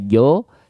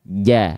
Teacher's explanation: Setelah kita mengetahui, oh huruf jim berarti dia termasuk ke dalam huruf yang tipis, karena ketika fathah bunyinya bukan vokal O ya, tapi vokal A nggak dibaca jo, tapi dibaca ja, gitu ya.